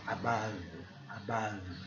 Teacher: O A tem um som mais também no fundo de garganta.